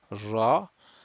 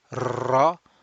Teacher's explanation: the makhraj of the ra is just given as the tip of the tongue touching the end of the dome there, and basically it vibrates in a very fine manner.